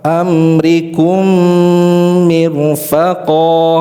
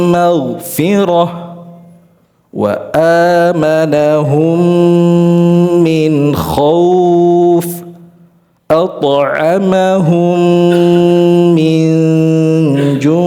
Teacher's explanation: Jadi syaratnya tidak hanya idgham, tidak hanya dimasukkan dengan sempurna tapi harus disertai dengan bacaan dengung ya gunah yang sempurna